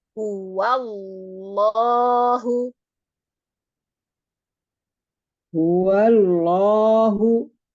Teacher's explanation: Langsung saja bertemu lam, tapi nanti kita tebalkan. Huwallah. Lidahnya langsung taruh di gusi. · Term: lamnya kita tebalkan